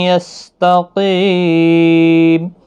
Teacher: قاف حروف مستعلیہ ہے، پر پڑا جائے گا. قی یا مدہ بھی ہے، 1 الف کی مقدار کے برابر کھینچنا بھی ہے، لیکن جب وقف کریں گے تو 5 الف کی مقدار، 3 سے 5 الف کی مقدار کے برابر کھینچ کر پڑھیں گے.